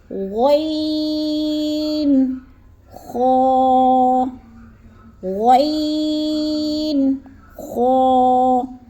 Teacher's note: حلق کے پہلے حصے سے ادا ہوتے ہیں، یعنی شروع والے حصے سے۔ حلق کا وہ حصہ یعنی جو منہ کی طرف ہے، جیسے غین، خا، جیسے غرارہ کرتے ہیں تو آواز نکلتی ہے، ویسے ہی ہم نے آواز نکالنی ہے، جیسے غین اور خا۔